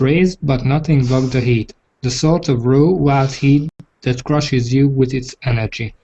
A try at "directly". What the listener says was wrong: Okay, with directly, don't put the emphasis on the die, but on the rectly. Yeah, so directly, not directly. So directly overhead was directly overhead.